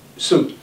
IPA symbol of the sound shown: s